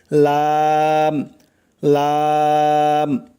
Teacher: জিহ্বার আগার কিনারা সামনের উপরের দাঁতের মাড়ির সঙ্গে লাগাইয়া উচ্চারণ হয় লাম